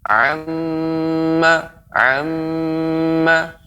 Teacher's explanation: disertai dengan dengung ya umumnya yang keluar dari kedua pangkal hidung yaitu huruf mim